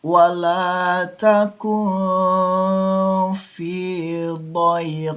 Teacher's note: Dengungkan dua ketukan ketika nun mati bertemu huruf fa. Dengungkannya tipis. Jangan sampai didengungkannya tebal atau lebai. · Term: ikhfa syafawi